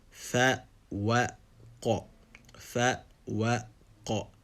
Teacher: Fa is an empty mouth letter, Waw is an empty mouth letter, and Qaf is a full mouth letter.